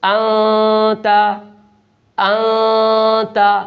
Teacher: اب دیکھیں یہاں نون ساکن ہے اور نون ساکن کے بعد اخفا کے 15 حروف میں سے تا آ گیا ہے، لہٰذا یہاں نون ساکن کی آواز کو ناک میں چھپا کر ادا کریں گے